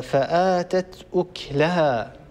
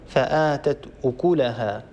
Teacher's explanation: أكلها بإسكان الكاف يقرأ قالون